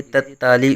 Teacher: یہاں دو عین اکٹھی آ رہی ہیں تو یہاں عین کی آواز ہی نکالیں گے، یہاں حمزہ نہیں نکلنا چاہیے